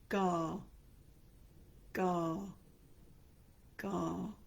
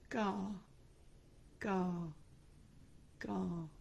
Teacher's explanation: the back of your tongue is going up and coming back down again